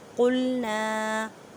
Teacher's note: قوف کو ادا کرتے وقت خیال رکھیں کہ کاف کی آواز نہ آئے کیونکہ یہ حروف متعلیقہ یعنی موٹے حروف میں سے ہے. الف سے پہلے زبر ہے اس وجہ سے اس کو ایک الف کی مقدار میں کھینچ کر پڑھیں.